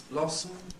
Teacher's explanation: Schwa and m may make syllabic m, so that blossom becomes blossom.